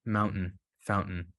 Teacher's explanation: that's a glottal stop that's a Hamza in Arabic